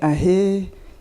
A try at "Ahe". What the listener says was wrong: Honorable, you must be careful. When you said ahe, it sounded close to awe. Awe massacre.